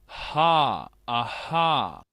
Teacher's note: es un sonido glotal que tiene el sonido que nosotros hacemos con la jajejijoju. ha, aha, Este sonido realmente pertenece a la H.